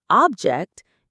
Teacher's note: if you put the stress on the first syllable, object, it becomes a noun, meaning a thing.